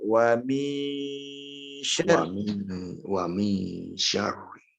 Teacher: Tapi karena ini ikhfa, harus dileburkan atau disamarkan kepada syin. Wa mi, kita nyebut min tapi nyebut sya juga.